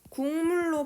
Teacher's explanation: 미음 만난 거지. 기억이 미음 만났더니 기억이 뭐로 바뀐 거야? 무, 느, 응 중에 응으로 바뀐 사례예요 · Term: 비음화